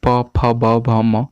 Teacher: प फ ब भ म जब हम लोग बोलते हैं तो हमारा ओष्ठ दोनों सटता है। आप लोग बोल के देखिए, तो इसीलिए इसे ओष्ठ कहा गया है।